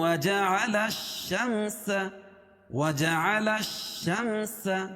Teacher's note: لام کو شین میں ملائیں گے کیونکہ یہاں الف لام کے بعد حروف شمسی کے 14 حرفوں میں سے شین ہے، تو یہاں لام نہیں پڑھی جائے گی